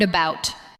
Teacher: We do not usually say every part with equal strength. We say about, with a light first sound and a stronger second part. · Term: weak syllables